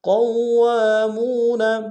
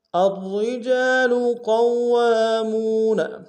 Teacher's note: قاف کو موٹا ادا کرتے ہوئے واو کے سامنے لائیں گے، واو کے اوپر تشدید زور دیں گے۔ واو کے ساتھ الف مدہ ہے، ایک انداز میں کھینچیں گے۔